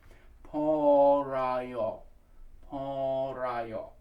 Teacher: have shied away from actually putting a p in there because people have a tendency to accent it far too much it's a very light p